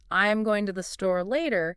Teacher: So in the sentence, I'm going to the store later, the natural emphasis would be on going, store, and later.